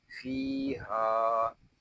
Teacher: यहाँ हा को भी हम एक अलिफ तक खींच कर पढ़ेंगे क्योंकि यहाँ अलिफ मद्दा हो रहा है